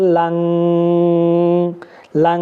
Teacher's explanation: ইখফা মানে হচ্ছে এটাকে বাংলাতে অনুষ্কারের মতো উচ্চারণ দিয়ে গোপন করে পড়তে হবে, কেমন অস্পষ্ট করে।